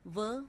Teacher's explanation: दंतोष्ठ्य ऊपरी दांत व निचले होंठ से